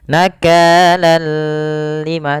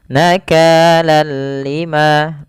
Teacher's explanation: kita membacanya hanya idgam saja tanpa disertai dengan gunah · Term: Idgham bilaaghunnah